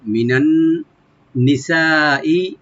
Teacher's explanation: নুনটাকে এখানে নুনে মুসাদ্দাদ একটু গুণনা করে নি বলবো। সিন আলিফটাকে এখানে আমরা মাদ্দে মুত্তাসিল হয়ে গেছে, এখানে মাদ্দে মুত্তাসিল হলে 4 আলিফ করে আমরা টানতে পারবো।